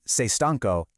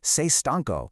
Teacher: It's just that little lift in your voice at the end of the sentence. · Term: intonation